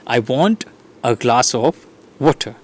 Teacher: So here the stress syllables glass and water. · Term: stressed and unstressed word